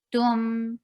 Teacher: When you are on ta, circle your lips well. When you are on meme, the lips should be in a very normal position.